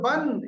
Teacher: নুন সাকিন আওয়াজকে পুরো জাহির করে দিচ্ছি, গুন্না করছি না, এটার নাম ইজহার।